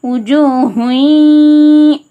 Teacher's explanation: நூன சவுண்டை இன்ன சவுண்டை முற்றிலுமா நீக்கிட்டு யா சவுண்டை சேர்த்து மால் குன்னறதுக்காக ஒரு அலிஃப்க்கு நிகராக மூக்கில் நிறுத்தி குன்னா செஞ்சு ஓதணும். உஜூ ஹுன்றத உஜூ ஹுய் அந்த மாதிரி ஓதணும்.